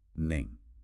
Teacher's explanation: Listen carefully to the rising tone on the first word, which indicates capability.